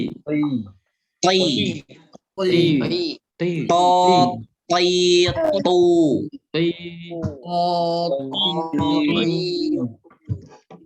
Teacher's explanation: Ujung lidah bertemu pangkal gigi seri atas. Ingat, to itu dibaca to, tebal, jangan ta.